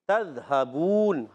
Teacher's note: تذہبون میں تا کو ذال سے ملانا ہے اور ذال کو ہلانا نہیں ہے